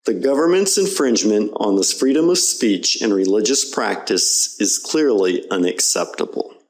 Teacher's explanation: You don't hear the vowels pronounced clearly because they're unemphasized. And it doesn't happen just in informal speech, okay? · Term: schwa